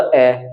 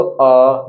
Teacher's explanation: अ इसको बोला अ एक मात्रा का समय लगा लेकिन यहां पर अ बोलेंगे इसको अ दो मात्रा का समय लगा